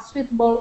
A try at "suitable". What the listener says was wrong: First up is suitable, a suitable fireplace. Suitable, with the stress at the beginning. Suitable.